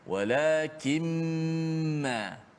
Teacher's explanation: hanya kita memanjangkan gunnah masuk dalam hidung kita.